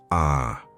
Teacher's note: It's deeper, more guttural, as if it comes from the back of your throat. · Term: pharyngeal aleph